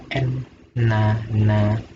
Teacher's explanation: berasal dari ujung lidah dan menempatkan lidah pada langit-langit mulut atas tetapi agak tengah. Sini ya, mulutnya bagian atas tapi agak tengah, agak di tengah. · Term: nun